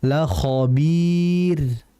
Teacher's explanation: Harus dibaca tipis ro-nya.